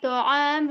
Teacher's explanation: जो आइन अलिफ जबर आ है, ये एक अलिफ की मिकदार खींच कर पढ़ेंगे। यहाँ पर अलिफ मद्दा हो रहा है।